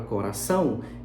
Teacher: na sílaba são da palavra coração, eu tenho um som consonantal e 2 vocálicos. Como esses 2 vocálicos estão na mesma sílaba e eles não podem ser separados, obrigatoriamente um tem que ser vogal, o outro tem que ser glide.